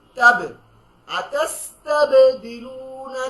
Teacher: তাবে পেশের অর্ধেক উচ্চারণ ধাক্কা দিয়ে